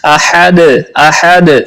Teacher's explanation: احد، ہا کو ہا نہیں بنانا، احد پڑھنا ہے۔ حلق کے درمیان والے حصے سے ہا ادا ہوتی ہے، تو اس کو احد پڑھنا ہے، اور دال پہ قلقلہ بھی کرنا ہے۔